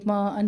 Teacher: ما پر مد ہے 2 الف کے برابر لمبا کریں گے. ما ان پہ مد 2 الف کے برابر لمبا.